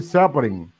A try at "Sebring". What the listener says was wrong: Sebring, não é, o E não tem um acento agudo, AVC. O E não tem acento agudo, é Sebring. No inglês.